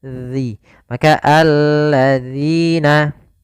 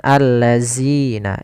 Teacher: Kemudian sahabat Quran, hati-hati di dalam pelafalan zalnya. Zal di sini agar dia terbaca dengan baik, itu dengan ujung lidah kita menempelkan dengan gigi sari atas